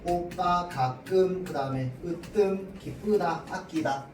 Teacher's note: 앞말에 받침이 없는데 지금 된소리가 일어나고 있잖아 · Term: 두 모음 사이에서 나는 된소리